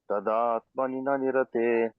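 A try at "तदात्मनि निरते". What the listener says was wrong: Tadatmani nirate. No, you said the na, the na in between is letters.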